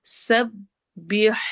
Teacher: حلق کے درمیان سے، تھروٹ کے مڈل پارٹ سے